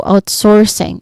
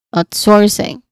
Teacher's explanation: the stress is still on the first syllable out. So outsourcing source it's a dip thong followed by an R sound.